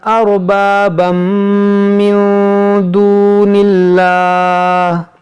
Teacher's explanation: اس میں جلالت سے پہلے زیر ہے تو اس کو ہم باریک پڑھیں گے، اس کو ہم موٹا نہیں کریں گے